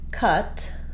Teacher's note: the U by itself just says the stressed schwa, the central vowel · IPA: /ʌ/